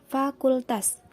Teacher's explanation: bibir bawah didekatkan pada bagian bawah gigi atas sehingga udara dapat melewati lubang yang sempit antara gigi dan bibir dan menghasilkan bunyi desis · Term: konsonan frikatif tak bersuara